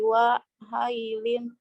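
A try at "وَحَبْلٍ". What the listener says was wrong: Hablim. Itu bukan ya ya. Ba. Itu ba. Wahablim. Bukan wahailin. Wahablim.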